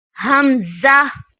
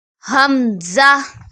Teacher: Hamza comes from the back of the throat to pronounce Hamza